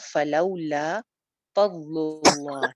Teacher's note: لفظ جلالہ کو ہم موٹا رکھیں گے کیونکہ اس کے پیچھے پیش ہے